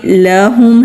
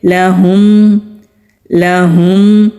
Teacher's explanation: لہم لہم، ہا حلق سے میم ساکن پر اظہار ہوگا یعنی کہ ہونٹ اچھی طرح بند ہوں گے، پھر عین پر جانا ہے۔